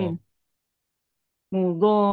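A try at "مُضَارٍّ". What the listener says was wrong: Tidak rin, tapi mudor. Roknya tebal. Nah, tebal.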